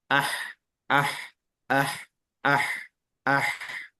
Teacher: dia berada pada tengah tenggorokan atau aqsal halqi berarti dia tengah tenggorokan mengucapkannya agak sedikit ditekan